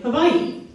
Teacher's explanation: The okaina represents what linguists call a glottal stop, which is basically a quick, sharp pause. In Olelo, Hawaii, the okaina is most often used between double vowels, indicating that you pronounce them both, like in Hawaii.